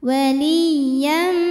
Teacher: Maka tanwinnya masuk ke mim, waliyam, jadi bunyinya m dan dengungkan, tahan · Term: idgham bi gunnah